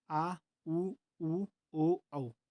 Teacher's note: अगर पश्य स्वर की बात करें तो पश्य स्वर यानी जीवा का जिसमें पश्य भाग काम में आए वो हो जाते हैं आपके पश्य स्वर। यानी जिनके उच्चारण में जीवा का पीछे वाला भाग प्रयोग में आता है वो होता है आपके पश्य स्वर। इसके अंतर्गत आते हैं आपके आ उ ओ औ।